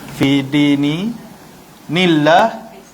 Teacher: Lafzul jalalah dibaca dengan nipis.